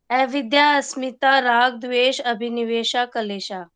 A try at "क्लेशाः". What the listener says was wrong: अच्छा, कलेशा नहीं है, क्लेशा है, क्लेशाह।